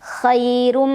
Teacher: Ra dibunyikan secara tafkhim karena ra berbaris dan barisnya di atas ya, tanwin dhammah. Maka cara membacanya adalah ditebalkan. Cara menebalkannya adalah mengangkat pangkal lidah kita. Khairum. Ada idgham bi gunnah karena ada tanwin dhammah bertemu huruf mim.